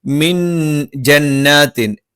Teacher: ജ നാവിന്റെ മധ്യഭാഗം മേലെ അണ്ണാക്കിൽ